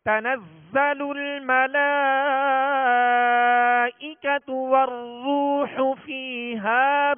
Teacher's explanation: لام کے اوپر جو کھڑا زبر ہے اور اس کے بعد حمزہ اسی کلمے میں ہے، لہذا مد کون سی ہوگی؟ مد متصل ہوگا، لہذا اس کو کھینچ کر پڑھیں گے